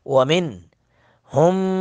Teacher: نون ساکن کے بعد ہا ہے، یہاں پہ اظہار کریں گے